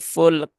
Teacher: Maka perlu diperhatikan ya bukan fulek ya, tetapi dia ditunaikan dulu sifat dari lam yaitu tawasud dari lam full kemudian syiddah dari kaf dan juga hamas dari kaf ya. Kaf dia punya sifat syiddah dan juga hams ya.